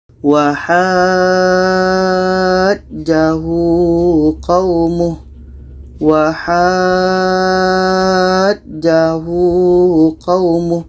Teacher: Selanjutnya dalam ayat 79 kita bertemu lagi dengan mat lazim kilmi mutsaqqal. Ha ini kita panjangkan 6 harakat baru disambut dengan ja tasydidnya.